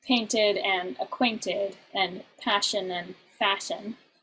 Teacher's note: he's added an unstressed syllable to the end of the line of iambic pentameter